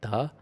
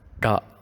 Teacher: So if you put your tongue here, it becomes like ta, contrary to the ta here. This sounds a little bit more feeble, ta. This sounds a little bit more pressurized, ta.